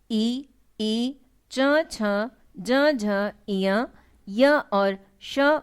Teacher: ई, च, छ, ज, झ, इय, य और श वर्ण तालु से निकलते हैं। जिह्वा का तालु से स्पर्श करने से ही इन वर्णों का उच्चारण होता है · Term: तालु से निर्गत वर्ण